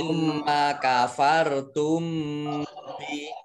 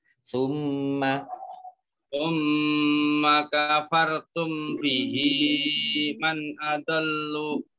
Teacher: mim sukun bertemu dengan huruf ba itu ikhfa safawi dibaca samar-samar